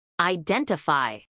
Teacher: acentuación en la segunda sílaba